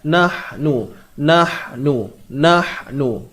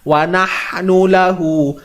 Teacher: Okey, ha. Duduknya di tengah halkum. Sempitkan bunyi ha ni. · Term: ha pedas